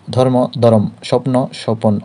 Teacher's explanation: অর্থাৎ উচ্চারণের সময় মধ্যে বা মাঝখানে স্বরধ্বনি আসে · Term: মধ্য সরাগম, মধ্য স্বরাগম